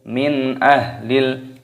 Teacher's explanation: nun sukun bertemu dengan alif, idhar halqi, dibaca jelas.